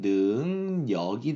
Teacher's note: 비음입니다. 이응, 비음이기 때문에 뒤에 있는 리을이 니은이 됩니다. 그래가지고 이거는 능력이 되겠죠. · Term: 리을의 비음화